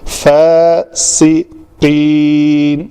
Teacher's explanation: فاسقین، فا پتلے حروف میں سے ہے، اس میں پتلا آئے گا الف. سین ہے، سین پتلا ہے، سیٹی کی آواز آئے گی. فاسقین، سین کا مخرج ہے، دونوں ہونٹ آپس میں ملیں تو پیچھے سے زبان آ کے ٹکرائے.